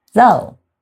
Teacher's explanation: You have the long O sound, and there's no hard ending.